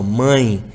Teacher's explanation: se o palato mole está aberto ele permite que o som saia pela cavidade nasal ali pelo nariz